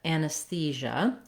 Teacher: we have third syllable stress.